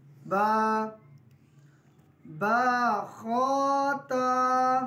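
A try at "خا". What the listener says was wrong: खा को मोटा करें। हा को गले के आखिर वाले से नरमी के साथ।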